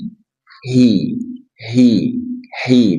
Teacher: ha dari pangkal tenggorokan